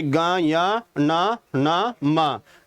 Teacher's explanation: जो नाक से अक्षरों की आवाज आती हो उसे हम नासिका वर्ण बोलते हैं